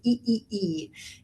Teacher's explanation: we want to hear the vocal cords coming together nice and fast